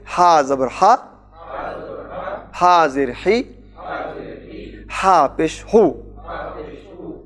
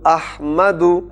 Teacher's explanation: یہ حلق سے ادا ہوتا ہے، وسط حلق یعنی حلق کے درمیان سے